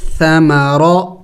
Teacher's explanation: را کو موٹا پڑھیں گے، موٹے حروف میں سے ہے